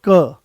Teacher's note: जैसे ही हमने क बोला कोई ज्यादा जोर नहीं लगाना पड़ा आराम से वो आ गया है कम कम प्राणवायु की आवश्यकता पड़ी। आराम से आपने उसको बोल दिया।